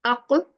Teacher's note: We touch. The qalqala is we touch the makhraj and we just leave it quickly.